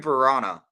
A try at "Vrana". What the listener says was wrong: Varna. It's not Varana. It's Varna. Varna. It's one syllable. You guys are saying it almost like it's 2 syllables. Varna. It's not Varana. It's Varna.